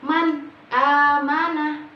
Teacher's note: jelas dari nun sukun langsung kepada alif tanpa adanya dengung atau menyamarkan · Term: Idhar, idhar